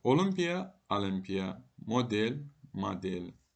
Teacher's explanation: O ilə yazılıb a ilə deyilən sözlər